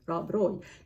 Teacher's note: I'm just rolling the R of Rob Roy.